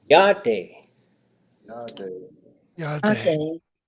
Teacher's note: So the vowel goes long every single time.